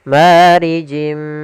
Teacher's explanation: thii di sini panjangnya dua harakat kemudian marijimi sama di sini ada kasratain bertemu dengan huruf mim yaitu idgham Bi ghunna kita masukkan lagi tanwinnya ke huruf mim dan ditahan gunahnya